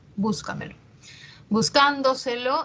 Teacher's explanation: una palabra compuesta no es simple no entonces vemos aquí que la mayor fuerza de voz está en la anterior a la antepenúltima sílaba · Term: sobresdrújulas